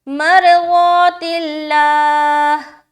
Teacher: और हा पे जब हम स्टॉप करेंगे, ज़ेर हटाकर सुकून लगाएंगे तो हा पूरा अदा होना चाहिए